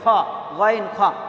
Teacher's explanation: গইন এবং খ দুটো একই জায়গা থেকে বের হয়, কণ্ঠনালীর উপর থেকে একদম।